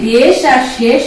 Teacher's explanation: এই যে বেশ আর শেষ আমরা উচ্চারণ করছি, এইগুলো হচ্ছে সংবৃত উচ্চারণ